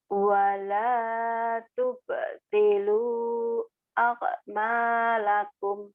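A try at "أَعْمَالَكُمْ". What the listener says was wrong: orang Jawa akmal melulu kan itu ka ag bukan ak.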